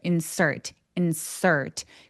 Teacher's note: 그리고 아까 걔는 insert insert r이 있어요. 자 얘가 r이 느껴지게 s에서 rt로 바로 가는 것처럼 발음하시면 돼요.